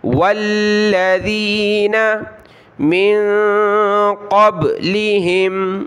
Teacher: ساتھ ملایا، لام کے اوپر تشدید سختی کے ساتھ پڑھیں گے، نون ساکن پر یہاں ہم نے ناک میں آواز پیدا کرنی ہے